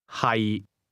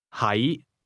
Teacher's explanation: to be is pronounced with a low, level tone, and to be located is pronounced with a mid-rising tone.